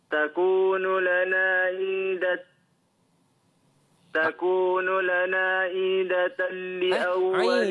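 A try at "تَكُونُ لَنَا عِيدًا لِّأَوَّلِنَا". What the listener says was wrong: jangan tambah aidatal. Aidal. Ai dulu. Dal. Li awwalina.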